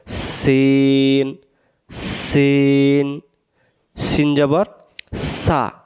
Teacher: জা, সিন এবং সদ অক্ষরের মাখরাজ একই। সিন অক্ষর সামনের নিচের দাঁতের আগা থেকে শিশি দিয়ে পড়তে হয়।